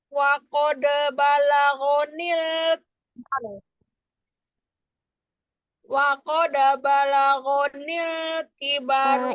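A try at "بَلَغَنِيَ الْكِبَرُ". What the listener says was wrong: Itu ada ya-nya ya. Wa qad balaghoniyal niyal.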